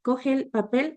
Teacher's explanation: Dos vocales iguales que coinciden se funden en una vocal, produciendo un ligero alargamiento de la misma. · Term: vocales largas